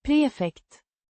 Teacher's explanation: Pronounced Prefekt. with a distinct emphasis on the first syllable.